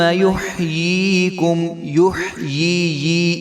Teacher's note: یا کو یا کے ساتھ ملائیں گے تو دو بار یا کی آواز آنی چاہیے